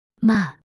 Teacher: fourth tone sharp and falling